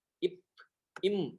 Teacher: இரண்டுக்குமே இதழ் ஒட்டும். இரண்டுமே ஓரிடப் பிறப்பு.